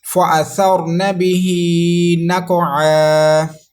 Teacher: را ساکن سے پہلے زبر ہے تو را کو پور کرنا ہے، موٹا کر کے پڑھیں گے، اور را ساکن ہے اس لیے را کو اس سے پہلے والے حرف سے ملا کے بھی پڑھنا ہے، متحرک حرف سے۔